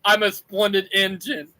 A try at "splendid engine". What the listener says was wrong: So you said spread engine, not a splendid engine. You said spread engine.